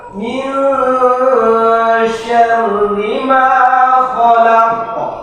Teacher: nun atau nun sukun atau nun tanwin bertemu dengan shin itu dibaca samar-samar. Bacaan ikhfa.